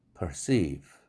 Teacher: perceive, seive라는 음절의 액센트가 있으니까 perceive가 아니죠. 힘 빼고 perceive, 약하게 기음이 쏟아져 나오게만 하면 됩니다. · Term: 약한 기음